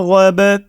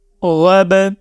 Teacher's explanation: اس word میں آپ دیکھیں کہ را کو ہم موٹی آواز میں پڑھیں گے، ٹھیک ہے، غائن کو بھی ہم موٹی آواز میں پڑھیں گے